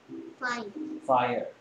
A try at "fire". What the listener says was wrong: 아닌 것 같은데, Fear 같은데. 자, I 소리를 잘못했죠. I가 무슨 소리를 했어요? I가 무슨 소리를 했어요? 아이가 I 됐죠.